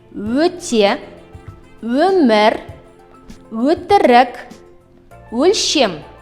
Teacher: Мягкий, губной. При произнесении данного звука губы сильно вытягиваются вперед, язык продвигается вперед. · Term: гласный звук Ө